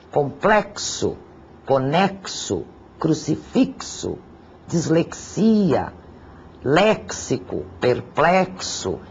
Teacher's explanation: pode ter um som de KS como se eu o percebesse um som de k seguido de uma sibilante s